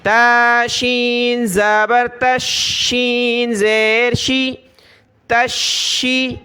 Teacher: شین کے اوپر تشدید ہے تو اس کو سختی کے ساتھ پڑھنا ہے